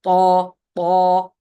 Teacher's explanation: the ta is the heaviest letter, one of the heaviest letters, so it's tafkhim. You have to raise the tongue.